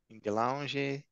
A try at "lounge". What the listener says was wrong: Just lounge, no E at the end. Well, spelling, yes, but pronunciation, no. Lounge.